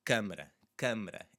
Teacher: a bit of a nasally sound, but it's a bit more closed off. It's not this open.